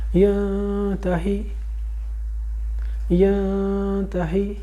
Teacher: اب یہ لفظ ہے، ایک لفظ ہے، یا زبر نون ین، نون کو دیکھیے اس کے اوپر کوئی زیر زبر نہیں ہے، ایکچول میں اس کے اوپر جزم ہے، لیکن اس کے بعد 15 حروف میں سے ایک حرف تا آ رہا ہے وہیں پر اسی ایک لفظ میں، تو یہ اخفا حقیقی بنتی ہے، اس نون کو ہم چھپا جائیں گے